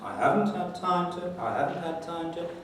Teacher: there is a clear prominence on the first syllable of haven't. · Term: high head